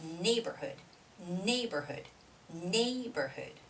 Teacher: it's neighborhood nay has the stress